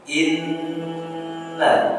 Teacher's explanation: Inna, maka ketika kita membaca hukum nun yang bertasydid atau huruf nun yang bertasydid, maka dimasukkan ke dalam rongga hidung. Inna ditahan satu alif atau dua kali. · nun tasydid di sini adalah hukumnya gunnah, dimasukkan ke dalam rongga hidung, dan ini dinamakan dengan gunnah akmal badan, yaitu tingkatan gunnah yang paling sempurna.